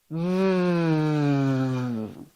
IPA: v